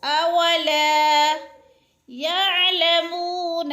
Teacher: اولا لا پہ الف مد ہے، ایک الف کے برابر کھینچ کر پڑھنا ہے لا کو